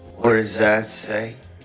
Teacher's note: that T from what, it actually morphs into the D sound of does. What does. So he pronounces it together, what does.